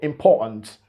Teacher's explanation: He didn't pronounce the T in that unstressed syllable, important. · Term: British glottal stop